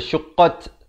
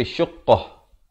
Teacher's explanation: Bila waqaf di sini, kalau pilih untuk waqaf, ta marbutah, ta simpul, ditukarkan kepada bunyi ha dan diberikan tanda mati mendatang. Ya, jangan baca syuqqat tapi syuqqah.